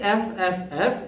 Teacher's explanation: is on the van তার মানে এখন প্রথমত খেয়াল করো এফ এফ উচ্চারণটা আমরা করেছি উপরের দাঁতের সাথে নিচের ঠোঁট লাগলো এফ অর্থাৎ বাতাসটা ধাক্কা এখানে এসে ধাক্কা খেল এফ বাঁধা পাচ্ছে